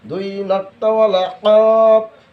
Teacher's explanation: জিহ্বার গোড়া তার বরাবর উপরের তালুর সঙ্গে লাগাইয়া